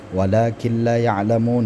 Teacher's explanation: Nun mati bertemu dengan lam idgham bila ghunah